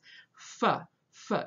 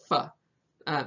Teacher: that F is a bilabial fricative, so you're using your two lips. F, not like Modern English where it's a labiodental, where you push that lower lip kind of under your teeth and go F.